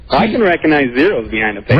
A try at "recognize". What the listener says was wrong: When you say the word recognize, please pronounce the G. It's not recognize. Recognize is not a word.